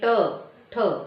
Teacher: तो आप बोलकर देखेंगे ट, ठ, हमारी जिह्वा क्या होती है? थोड़ी उल्टी होके ऊपर लगती है, तो वो होता है हमारा मूर्धा। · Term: मूर्धन्य